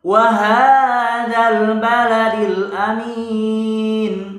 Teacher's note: Waha juga panjang, itu sakalnya berdiri ya. Waha panjangnya 2 ketukan juga, 2 harakat juga.